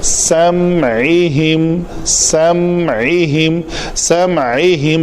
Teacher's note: میم کے مخرج کو آپ نے پکڑ کے رکھنا ہے اور عین کی ادائیگی آگے لے لینی ہے